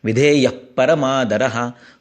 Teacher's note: विधेय के आगे विसर्ग है और उसके आगे प है, तो ये उपधमानीय है, धमान करना है, फूंकना है। क्योंकि पप ब म ये जो है ये ओष्ठ्य वर्ण है, तो उसमें फूंकना होता है। · प के ऊपर एक जोर आता है जिसे उपधमानीय कहा जाता है